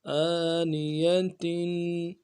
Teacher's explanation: اس تنوین کو دو زیر جو ہیں اس کو غنہ کریں گے اور ایک الف کی مقدار میں اس غنے کو کھینچیں گے